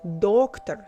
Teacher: Доктор, stress on the first syllable